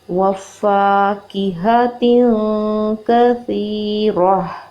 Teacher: آگے گول تا ہے، وقف کی صورت میں ہم گول تا کو ہا ساکنہ میں تبدیل کر کے پڑھیں گے · اس کو ہم نے سافٹلی پروڈیوس کرنا ہے. را اس کے اوپر زبر ہے، اس کو ہم نے پر پڑھنا ہے، ایک حرکت پڑھنا ہے · تنوین میں نون کی آواز کو ناک میں چھپا لیتے ہیں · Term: اخفاء